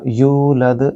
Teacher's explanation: اب یہاں بھی دیکھیے کہ دال آخر میں ہے اور یہاں بھی دال، تو ان کو بھی قلقلہ یعنی کہ گونجتی ہوئی آواز محسوس ہوگی۔ یولد، یو کے آگے واو مد ہے، لہٰذا یو کو تھوڑا موٹا پڑھا جائے گا، تھوڑا کھینچ کے پڑھا جائے گا، لمبا کیا جائے گا